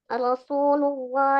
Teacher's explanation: lafaz jalalah yang sebelumnya berharakat dommah ataupun fathah itu selalu dibaca tebal